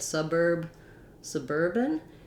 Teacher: you can hear my vowel sound didn't change, but the length of my vowel did. So I still have the su and the burb, but now it's short long.